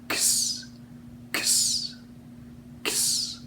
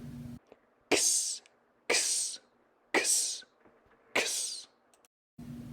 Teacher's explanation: It kind of makes a K and an S sound, one right after the other. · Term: X sound